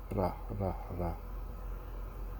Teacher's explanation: And just say ra, like ah and ra, ra, ra. Like just like rolling your Spanish R without the roll, like a half roll.